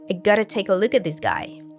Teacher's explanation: the K sound from take links to the schwa sound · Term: connected speech